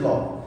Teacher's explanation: পাশিক দুই পাশে চাপ পড়ে, সেটা হচ্ছে যে ল। মুখের দুই পাশে চাপ পড়ে, এটা হচ্ছে কি ল।